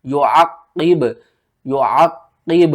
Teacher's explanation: क़ाफ के ऊपर कलकला किया, फिर बा के ऊपर भी कलकला किया।